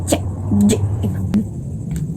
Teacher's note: C dan J ini menggunakan langit-langit bagian tengah. C J. Kalau C itu tidak bergetar.